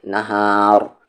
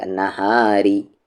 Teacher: را کو یہاں پر ہیوی کریں گے وقف کی وجہ سے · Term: را ہیوی